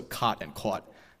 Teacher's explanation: Island where they actually lack the cot Cod merger um and pronounce these words with a split meaning those vowels are different like they are in New York City